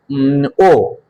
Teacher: এটা পশ্চাৎ ধ্বনি, এটা অর্ধ সংবৃত ধ্বনি, এটা উচ্চ মধ্য ধ্বনি, এটা হচ্ছে কুঞ্চিত ধ্বনি